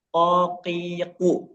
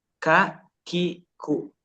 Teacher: kalau kof enggak, kokiku itu enggak keluar udara, tapi kalau kaf keluar karena dia menyentuh bagian yang kering.